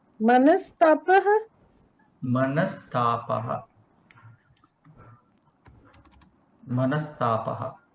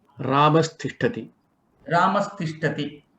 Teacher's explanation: Visarga is converted into the sakara. Then tapaha is there as it is.